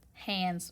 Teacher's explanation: When it's behind a letter that is voiced, that vibrates, D. If you touch your throat, you can feel it vibrating. That means that this S is also going to vibrate.